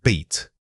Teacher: the length of time you hold the E sound makes it feel much more open in your throat